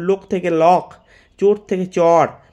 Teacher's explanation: ওকারের অকার প্রবণতা ব্যাপক পরিমাণে পরিলক্ষিত হয়